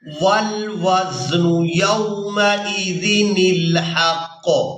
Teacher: यहाँ पर जो आप लोग ये छोटा नून देख रहे हैं, ये नून कुतनी है और यहाँ ये हर सूरत अदा किया जाएगा, यानी नून को लाम साकिन के साथ मिलाकर अदा करेंगे